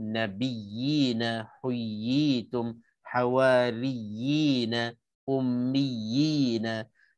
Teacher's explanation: Dia 2 harakat je. Cuma kita nak kena tamkinkan, nak kena tekankan ya yang ada sabdu tu. Nak kena tahqiqkan, nak kena betul-betul jelaskan ya yang ada sabdu, yang mana asalnya dua huruf ya mati dimasukkan ke dalam ya berbaris. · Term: mat tamkin